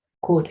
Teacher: La primera palabra se va a, pues, pronunciar de esa manera. La L es muda en este caso